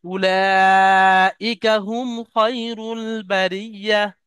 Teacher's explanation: উলা লাম, এখানে যে মাদার চিহ্ন আছে, এটা মাদ্দে মুত্তাসিল, অর্থাৎ 2 থেকে 3 আলিফ পরিমাণ টান দেন